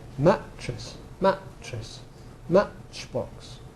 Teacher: adding the glottal stop in front of the Fortis consonant · adding a glottal stop which is common in RP and in the southern accents and also in also in in London accents so for instance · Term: glottalization